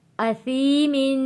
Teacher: سا کو پڑھتے ہوئے سین جیسی آواز نہیں آنی چاہیے، س نہیں ہونا چاہیے۔ اسی نہیں پڑھیں گے، اسیمن۔